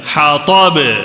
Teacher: جزم لگا تو کیا ہوتا ہے با میں قلقلہ ہوتا ہے